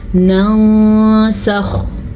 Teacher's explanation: اخفا کا مطلب چھپانا ہے، اس لیے ہم نون ساکن کو یہاں پہ چھپائیں گے لیکن غنّے کے ساتھ چھپائیں گے